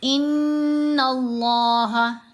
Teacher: نون کے اوپر ہم نے غنہ کرنا ہے، نون کے اوپر تشدید ہونے کی وجہ سے غنہ کیا جائے گا